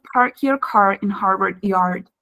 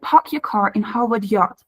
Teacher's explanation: New Yorkers usually drop the r at the end of their syllables